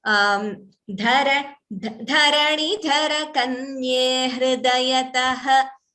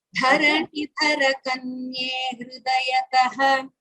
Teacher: instead of prolonging that visarga, it is better to keep it short itself.